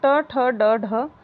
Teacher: हिंदी की जो मूर्धन्य ध्वनि होती है, ट वर्ग हमारा पूर्णधन्य वर्ग के अंतर्गत आता है। तो ट, ठ, ड, ढ यह हमारी होगी मूर्धन्य ध्वनि।